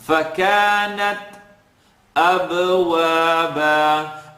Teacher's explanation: you're hearing a little click, or a pop rather in this case, on the ta.